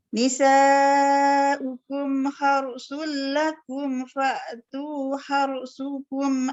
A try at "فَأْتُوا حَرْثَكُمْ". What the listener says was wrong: Sa bukan su. Fa'tu harsakum ke harsukum. Harsakum.